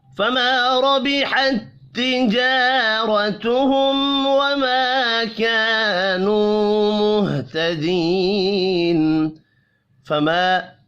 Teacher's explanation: فما الف مدہ ہے، ایک الف کے برابر کھینچ کر پڑھیں گے